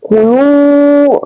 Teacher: hukum tajwid, yaitu mat tabi' atau mat asli, yaitu dibaca panjang dua harakat.